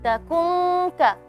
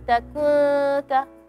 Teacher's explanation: nun mati kalau setelahnya ada harfal kaf atau qof, suara dengungnya keras.